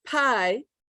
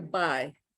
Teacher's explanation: if they don't aspirate instead of pie we're gonna hear by